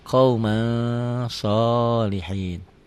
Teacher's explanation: Tulisan dan bacaan beda. Ditulisnya ada n-nya, dibacanya n-nya tambah g jadi eng. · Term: ikhfa